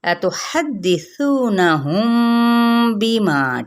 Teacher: میم ساکن کے آگے بار ہے، یہاں پہ ہم اخفاء شفوی کریں گے